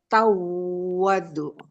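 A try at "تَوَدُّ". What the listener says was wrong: Jangan dipanjangin. Coba sekali lagi.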